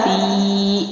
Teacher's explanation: اس کے بعد ہے ستین، سین زیر تا، ست، تا زیر یا تی، یہاں پر یا مد آ گیا ہے، یا ساکنہ سے پہلے حرف کے نیچے زیر ہے، تو 1 الف لمبا کریں گے